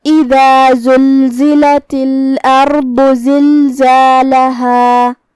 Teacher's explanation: کلمت اذا الف کے نیچے زیر ہے، لہذا ہم حمزہ کو نیچے سے ادا کریں گے. حمزہ کی ادائیگی حلق کے نیچے والے حصے سے ہے